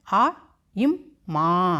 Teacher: ஆவுக்கு ஒரு மாத்திரை, இம்முக்கு அரை மாத்திரை, மாக்கு 2 மாத்திரை